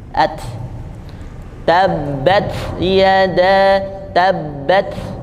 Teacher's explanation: Dal makhrajul hurufnya hanya saja dia ada cela sedikit ya jadi sisahkan cela sedikit tidak kuat menutupnya menempelnya sehingga terdengarnya ada hembusan nafas at tabbatada tabbat jadi hambusannya itu karena lidah menempel tidak terlalu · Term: huruf ta